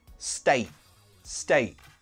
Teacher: notice that T stops in the throat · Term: glottal T